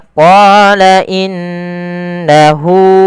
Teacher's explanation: gunah itu perlu ada penahanannya dan memasukkan ke rongga hidung terjadi ketika mim dan Nun berharakat tasdid itu wajib ditahan maka